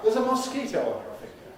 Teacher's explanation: Even though the finger is previously unmentioned, we don't have to emphasize it.